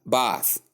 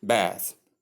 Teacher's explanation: In the UK pronunciation that is British English uh we have bath long a sound but in the US English that is American English we have bath that is short a sound.